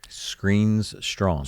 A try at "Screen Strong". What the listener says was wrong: Screen, just screen, no S, strong. Screen